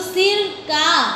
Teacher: बोलते समय अक्षर के मध्य में हल्का सा विराम होता है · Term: संगम